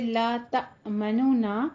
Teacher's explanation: پہلا طریقہ جو روم ہے وہ کیا ہے کہ آپ سننے والا آپ کی آواز میں پہلے نون کا تھوڑا سا ضمہ محسوس کرے۔ روم کیا ہے کہ سننے والا آپ کی آواز میں تھوڑا سا پہلے نون کا ضمہ محسوس کرے